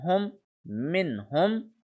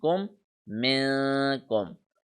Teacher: I read noon normally in this word minhum, but here I have stretched this noon minkum